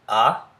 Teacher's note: the open front unrounded ah